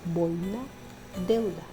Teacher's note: diptongo decreciente formado por una vocal abierta seguido de una vocal cerrada · vocal abierta seguido de una vocal cerrada por ejemplo boina deuda la vocal que recibe la mayor fuerza de voz es la abierta